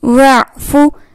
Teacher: حلق کے درمیانی حصے سے عین ادا ہوتا ہے